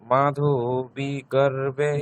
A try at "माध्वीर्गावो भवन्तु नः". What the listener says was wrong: माधवी नয় মাধ্বীর্গাবো দীর্ঘইকারের পরে নেক্সট বলতে হবে, হ্যাঁ, গার্ব নয়, গাবো,